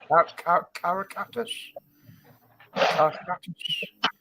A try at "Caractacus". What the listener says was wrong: There's an extra A in there.